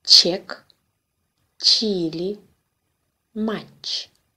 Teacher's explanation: Like Ч in English, cheese, but softer with the tongue raised higher.